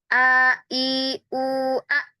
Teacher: Tapi kalau kita ucapkan misalnya huruf hamzah ya, A i U, maka di sini tertutup gitu. Di tenggorokan bagian paling bawah ini tertutup. Nafasnya juga langsung terhenti, langsung kayak diblokir gitu ya.